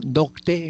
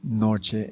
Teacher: El grupo consonántico latino, CT, evolucionó a che. Por ejemplo, nocte en latín, noche en castellano.